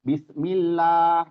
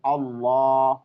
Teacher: Jadi kalau di bismillah bismillah millahnya itu ya tarqi tipis ya enggak boleh tebal karena setiap ee harfun jalalah atau kata Allah itu ketika di awalnya berharakat ee kasrah ya awalnya berharakat kasrah itu harus tarktif atau tipis ya.